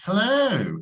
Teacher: Stretching, no sé si se han dado cuenta que cuando decimos algo, lo estiramos.